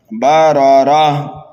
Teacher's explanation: وقف کریں گے تو گول تا کو ہائے ساکنہ سے بدل دیں گے ، وقف بالابدال ہوگا یہاں پر، بررہ۔ اور اگر ملا کر